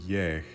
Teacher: that long E symbolizes a e vowel that is preceded by a onglide y. So that if English yes were an Icelandic word, it would be spelled long E S.